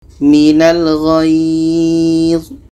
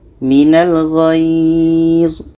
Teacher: Ini mad lain. Jadi cara bacanya kita panjangkan dekat ghai ini. Baru zui ini kita matikan.